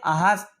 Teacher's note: नोट नहीं कर पी आप लिख लीजिए कंठ से होता है कंठ से हा बोला जाता है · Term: विसर्ग